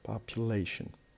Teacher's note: it has 4 syllables, and the stress is on the 3rd because we have ION, so the stress is before the last.